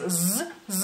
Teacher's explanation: la Z es una Z vibrante, por así decirlo, es sonora , es z, o sea, se escucha, digamos así, mientras que